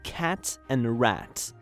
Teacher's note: A is the near front low unrounded vowel